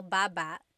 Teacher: Emphasis is on the first syllable. Baba.